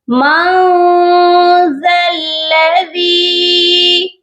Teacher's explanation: نون ساکن ہے اور اس کے بعد حروف اخفا ہے ذال، اسی لیے نون ساکن پر اخفا کریں گے ، مَن ذَا الَّذِي، اور ذال کو نرمی سے پڑھنا ہے